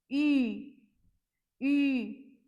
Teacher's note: the way you pronounce I in French, E, but you just need to pronounce it with the rounded lips.